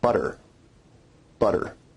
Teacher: notice where we write it with two t's in english that your tongue is producing a tap sound there rather than a full stop or plosive sound · Tap sounds involve a rapid flick of the tongue to some place of articulation. In North American English, we only really have one tap, and that's at the alveolar ridge. You can hear the tap sound in the word butter, butter.